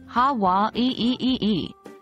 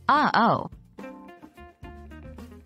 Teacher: it's a glottal stop similar to the pause in uh oh